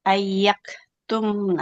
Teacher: jadi huruf kafnya harus mengalirkan nafas ya